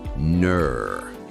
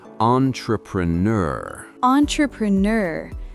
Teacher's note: It is a sound that requires a bit more tension in the back of the mouth. In American English, we use a deep R-colored vowel. It rhymes with words like sir or her, but it is more elongated and purposeful.